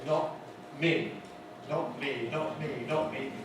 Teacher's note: Those of you who know about glottal stops perhaps know that in this position many speakers of English make the T sound at the glottis rather than with the tongue tip